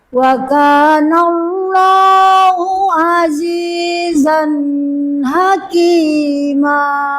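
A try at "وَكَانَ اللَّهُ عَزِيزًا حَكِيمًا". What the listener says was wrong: Sama Bu ya, izhar azizan hakima, jangan dilamakan. Ibu tadi mohon maaf ya, azizan hakima, jadi harus cepat ya, azizan hakima.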